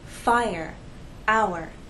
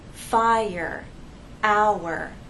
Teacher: them because they're different these words have two syllables fire our we have two vowel sounds and there is a gliding but there isn't a joining to make one vowel sound the vowel sounds remain separate here the first sound is aye-aye-aye